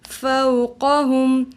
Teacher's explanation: افلم ینظروا الی السماء فوقہم. واو ساکن اس سے پہلے زبر ہے تو یہ واولین ہے. واولین کو نرمی اور جلدی سے پڑھتے ہیں